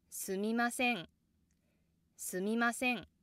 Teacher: Se has the accent and it causes the downstep.